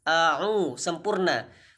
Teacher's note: Tentu huruf ain. Huruf ain ini makhrajnya di tengah tenggorokan dan di situ ada dhammah, maka harus dimoncongkan mulutnya.